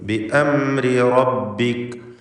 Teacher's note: ബി അംരി എന്ന റാഇന് തർക്കീഖാണ്, എന്നാൽ രണ്ടാമത്തെ റാഇന് തഫ്ഖീം.